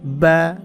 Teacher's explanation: 2 ঠোঁট থেকে, ঠোঁটের ভিজা অংশ থেকে বা এভাবে বলতে হবে